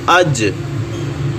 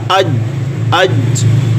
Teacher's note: जो ज़बान के दरमियान वाला हिस्सा है वो ऊपर वाले तालु के साथ लगेगा अज, अज। फिर जब छोड़ेंगे तो कलकला हो जाएगा अज, अज। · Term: जीम